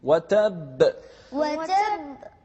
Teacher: يعني قلقلة مع التشديد